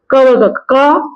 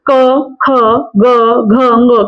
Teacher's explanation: क वर्ग का उच्चारण स्थान कंठ से होगा